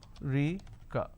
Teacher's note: Now in northern part of the country, they pronounce this as Rika. So they drop a syllable.